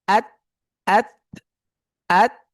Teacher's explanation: আত আত আত, অর্থাৎ যদি আমি যদি আওয়াজটা না ছেড়ে মানে জিহ্বার অগ্রভাগটাকে যদি আটকে রাখি আত, তাহলে কিন্তু কোনো বাতাস নেই এবং হার্ফটাও স্পষ্ট হচ্ছে না , পরিপূর্ণভাবে স্পষ্ট হচ্ছে না। আত আত। ঠিক আছে, যখন আমি